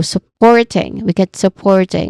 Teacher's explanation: We stress on the second syllable here, but the first syllable is so, which is a soft vowel sound, schwa sound. And then port, we're familiar with that, which is the stress syllable, and then ing, soft ing in the end.